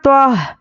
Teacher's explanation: توا کو موٹا پڑھنا ہے نہ کہ تا پڑھنا ہے تو تا میں تو میں فرق آپ کو یاد رکھنا ہے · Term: حرف مستعلیہ